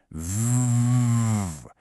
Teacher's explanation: The V sound is basically the F sound, but with your voice turned on.